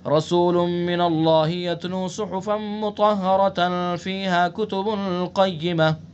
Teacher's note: یعنی مطہرہ پر وصل کریں اور قیمہ پر وقف کریں. اسی طرح سے آگے وما تفرق الذين اوتوا الكتاب الا من بعد ما جاءتهم البینہ، یہ تو قوی علامت ہے، اس کے اوپر کوئی حرج نہیں آگ کریں.